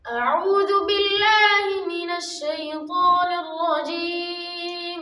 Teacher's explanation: শিনের ক্ষেত্রে হামস ক্রিয়া হচ্ছে, বাতাস বের হচ্ছে, কিন্তু জিমের ক্ষেত্রে ওই বাতাসটা হবে না